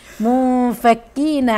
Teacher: عندي نون ساكنه وبعدها فا اخفاء اخفاء حقيقي